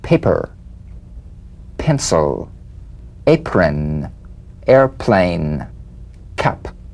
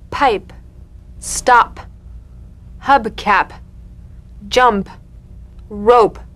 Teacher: The whispered tap of this drumbeat P is played with a light springing apart of the lips, just like for the B. On the springing away, feel a B in a whisper without any puff of air.